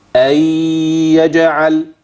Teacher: امتى هتيجي الغنه لما تصل بالكلمه اللي بعديها ايه اللي هيحصل هحول النون دي لياء وهدخل الاتنين في بعض